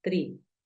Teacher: la doble E tiene un sonido como una I, pero es un poco más alargada. Recuerda que yo te la describí como un sonido un poco más continuo, tiene continuidad.